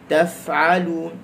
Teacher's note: huruf fa ujung gigi atas ngambil bawah, lepas suara dan angin.